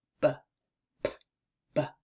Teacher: And so it's very similar to the P-P as in penguin sound except for the fact that the P sound is unvoiced and the B sound is voiced